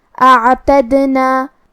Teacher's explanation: پھر یہاں حرف الدال پہ جزم ہے تو یہاں دال کا حکم ہے قلقلہ. قلقلہ کا معنی ہے حرف ساکن کو ہلانا، لہذا ہم حرف الدال کو ہلاتے ہوئے یہ کلمہ کو پڑھیں گے